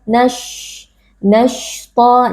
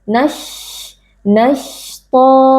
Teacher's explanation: pada huruf shin kita tidak memajukan bibir kecuali kalau dia dalam keadaan dhammah.